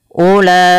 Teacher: Nah, ketika ada mad tabi'i bertemu dengan hamzah pada satu kata, ulaika satu kata, dan inilah yang dinamakan dengan mad wajib muttasil, maka wajib dipanjangkan 4 harokat pada lafal la-nya dan tidak boleh dikurangi atau 5 harokat